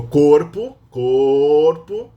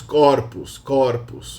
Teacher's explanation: they change the openness of the O from closed to open in the singular when they go to the plural